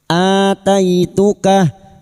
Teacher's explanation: samakan dengan sebelumnya fakud ma aataituka a hamzah yang bertemu mad hamzah yang berharakat alif kecil di atas mad badal dua harakat kita panjangkan